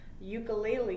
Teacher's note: it starts with a U, but it's a y sound at the beginning